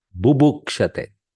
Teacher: One is Mahaprana in the Dhatu and Bu is Alpaprana in the Sananta Dhatu.